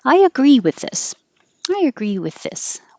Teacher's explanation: when you say I, your tongue goes very high and then agree is low. So you just let it slide. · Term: invisible